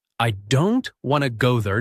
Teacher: Now the smaller words like I, to and there are said more softly or quickly.